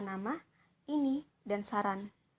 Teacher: Lalu bunyi N, termasuk N biasa, yang termasuk dalam bunyi apikoalveolar, termasuk dalam bunyi nasal dan bersuara